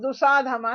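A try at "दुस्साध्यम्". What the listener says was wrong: దుస్స నుండి దుసాధం కాదు, దుస్స అక్కడ ఉంటాయి, ఇక్కడ సు ఉంది కనుక సుసాధం అంటే మీరు అక్కడ దుసాధం అంటే దుస్స ఇంకో సా ఉంది అక్కడ.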